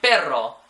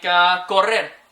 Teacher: A double R will sound more like a rrr, like it's really, really trilled.